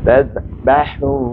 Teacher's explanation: ha di sini ha hamas, tengah halkum